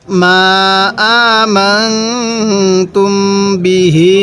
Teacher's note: বাজের বি, হা খারাজের হি, এই হায়ের মধ্যে এক আলিফ টান দিব